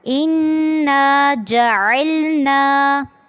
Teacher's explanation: اِنَّا پہ پہلے آپ نے نون پہ غنہ کرنا ہے اور پھر اس کو الف سے ملاتے ہوئے لمبا کرنا ہے